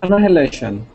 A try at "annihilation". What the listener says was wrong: The H. We don't really say the H too strongly in American English.